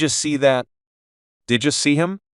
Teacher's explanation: There's no pause between did and you.